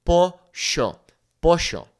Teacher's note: The double L in Spanish simply makes a Y sound. Now, in certain countries like Argentina, they might say something like sh